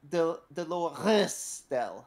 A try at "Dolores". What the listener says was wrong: You're putting too much of your throat into it. Yeah, it's it's more of a tongue thing. You're vibrating the air coming through you.